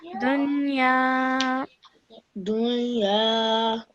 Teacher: after noon sakin, you have the letter ya. So produce a light nasal sound.